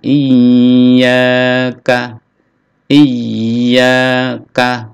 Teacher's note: ada tasdid ya, ditekan lalu dipanjangkan, ditahan. Iyyaka, iyyaka, kaf pendek.